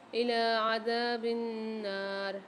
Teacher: نون کے اوپر مشدد آ رہی ہے، غنہ کر کے پڑھیں گے اور کھینچ کے بھی پڑھیں گے کہ ساتھ الف بھی آ رہا ہے۔